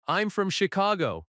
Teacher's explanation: falling tone at Chicago because it is a statement.